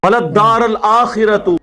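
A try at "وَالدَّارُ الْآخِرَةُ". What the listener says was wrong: नहीं, वलद्दारुल, रा के ऊपर पेश है, आंखें खोल के पढ़ो, वलद्दारुल आखिरतु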